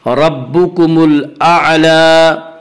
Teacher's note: लाम के ऊपर खड़ा ज़बर है, खड़ा ज़बर को 1 अलिफ के बराबर खींच कर पढ़ेंगे